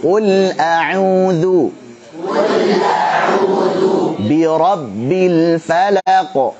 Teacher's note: qafnya tebal, ditarik, lamnya tipis.